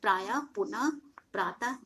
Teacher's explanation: विसर्ग का उच्चारण ह के रूप में होता है। इसका प्रयोग प्रायः शब्द के अंत में किया जाता है, जैसे यहाँ पे देख लेंगे प्रायः, पुनः, प्रातः, अंत में विसर्ग है।